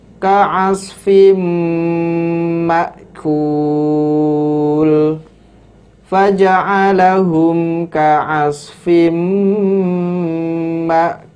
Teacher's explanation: Faja'alahum ka'asfim ma'kul. Tanwin bertemu dengan huruf mim. Hukumnya adalah idgham bi gunnah, sehingga dibaca dengan cara dimasukkan kemudian digunnahkan.